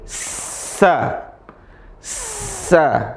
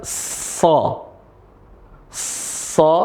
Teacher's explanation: Tempat keluarnya sama cuma beda sifat. Yang pertama itu tipis yang di sini tebal.